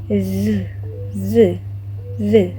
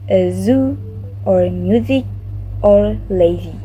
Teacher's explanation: we need to release it from the slit with the teeth. So slowly from the slit, and also need to vibrate the vocal cord. So like Z, Z, Z.